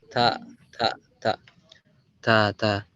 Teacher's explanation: Nah, ini huruf ta-nya masih syiddah, masih kuat. Salah satu sifat dari huruf ta adalah hams. Ada bocor dikit.